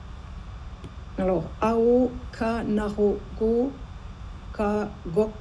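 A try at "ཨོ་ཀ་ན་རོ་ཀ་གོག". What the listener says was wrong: Très bien, parfait, carrément parfait.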